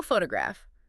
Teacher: photograph clear stress on fu right first syllable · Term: primary stress